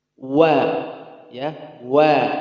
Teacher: huruf waw tipis, ya, tipis dan dia rokhawah, ya, rokhawah.